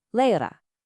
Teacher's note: the letter R at the end of a word or syllable, it often softens into a gentle A sound.